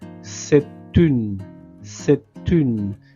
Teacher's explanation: Je fais la liaison. à l'oral entre la lettre T et la lettre U.